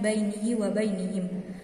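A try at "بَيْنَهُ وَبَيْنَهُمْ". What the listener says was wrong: Sebentar. Bainahu, bukan bainihi. Bainahu wa bainahum.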